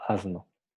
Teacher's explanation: La variación alofónica más importante en el español general ocurre cuando este fonema aparece ante consonantes sonoras, pues en esa posición S tiende a sonorizarse como Z, Z, porque no decimos asno, decimos asno, casi, bueno, una Z muy suave, ¿no? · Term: Z sonoro